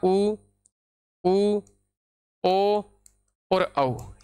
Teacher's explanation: गए वृत्ताकार यानी इन स्वरों का अगर अपन उच्चारण करेंगे तो उच्चारण करने पर अपनी होठों की आकृति गोल हो जाती है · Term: वृत्ताकार स्वर